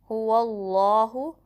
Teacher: کو اس میں جلالہ کے لام سے ملائیں گے، ہو اللہ، اور اس میں جلالہ کو پر پڑھیں گے کیونکہ جو ما قبل ہے فتحہ آئی ہے،